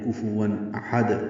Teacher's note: ہم نے وقف کر دیا، دال پہ قلقلہ کیا